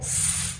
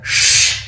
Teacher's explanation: С дыбысын күлімдеп, тіліміз тіске тіреліп «с» деп айтатын болса, ал Ш дыбысын ерніміз дөңгелек болып, тісіміз кішкене ашылып, тіліміз жоғары тұрады